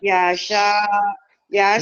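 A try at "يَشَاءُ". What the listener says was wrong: Enggak ada yang panjang. Iya. Ya sya'a, pendek semua. Ya sya'a.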